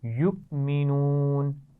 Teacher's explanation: حمزہ کو ہم حمزہ ساکن کہتے ہیں اور اس کو جھٹکے سے پڑھتے ہیں